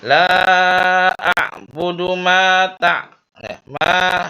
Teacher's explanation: Di ayun ma jangan terlalu panjang. La a'budu ma ta ya, ma ya segitu aja, jangan terlalu panjang ya. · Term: mad tabi'i